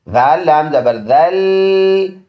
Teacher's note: ان ذال اور اس لام کے بیچ میں یہ جو 2 الف ہے دونوں لکھ کے ہے، پڑھے نہیں جاتے۔ ذال نرم سا پڑھیں گے اور لام اس کے ساتھ جوائن ہے اس شد کی وجہ سے